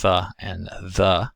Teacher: the tongue is placed between the teeth or behind the upper teeth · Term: interdental consonants